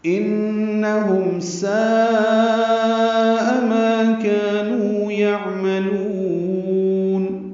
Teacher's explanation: ان میں نون مشدد پہ غنہ ہے، ہم میں میم ساکن پہ اظہار شفوی ہے. · ساء میں مد متصل ہے، الف مدہ کے بعد حمزہ آنے کی وجہ سے. ما کا دونوں الف مدہ ہیں، نو واو مدہ ہے، یہ تینوں کو 2 حرکات لمبا کرنا ہے. ساء میں مد متصل کو 4 حرکات سے زیادہ لمبا کرتے ہیں.